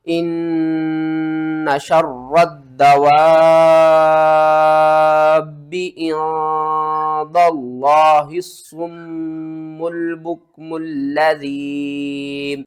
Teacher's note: ماد کو 5 الف کے برابر کھینچنا ہے، اور درمیان میں الف اور لام ان دونوں کو آپ نے چھوڑ دینا ہے.